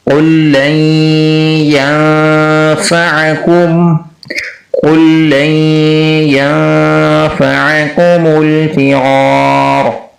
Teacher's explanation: لن میں جو نون ساکن ہے اس کو ادا نہیں کریں گے بلکہ لام کو آگے یا سے ملائیں گے · دیکھیں پہلا جو ہے رول وہ ہے ادغام مثلین۔ یہاں پر دو لام آ رہے ہیں اکٹھے، یہاں پر پہلے لام جو کہ ساکن ہے اس کو ادا نہیں کرنا، یہ ادغام مثلین ہے۔ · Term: ادغام مع الغنہ